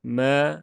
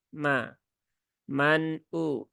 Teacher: ini mem itu tipis, jadi jangan dibaca me ya, tapi biasa ma ya, ma. Man u.